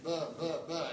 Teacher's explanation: A voiced labial plosive is buh.